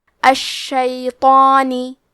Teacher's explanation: مد الف میں پیچھے والے حرف کا حکم لیتے ہیں تفخیم میں اور ترقیق میں، تو کیونکہ اس کے پہلے حرف تو ہے تو ہمیں مد الف کو بھی بھاری آواز میں پڑھنا ہے · کلمت الشیطان میں شین پہ تشدید ہے تو ہم 2 حرف کے برابر شین کو پڑھیں گے. تو حروف التفخیم میں سے ہے تو ہمیں تو کو موٹی آواز میں پڑھنا ہے. کیونکہ اس پہ کھڑا زبر ہے تو یہاں مد الف ہے.